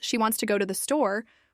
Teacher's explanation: we stress wants, go, and store. The other, words are softer and faster.